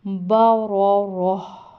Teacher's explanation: با را راہ، اس کو با را نہیں پڑھنا، مطلب الف کی آواز نہ آئے، صحیح کلیئر ہا کی آواز آئے